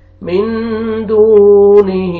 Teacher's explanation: واو جزم سے پہلے پیش آ رہے تو آپ نے دال کو کھینچنا ہے